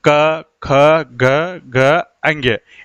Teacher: कंठ से उच्चारण हो रहा है, यानी कंठ का मतलब गले से उच्चारण हो रहा है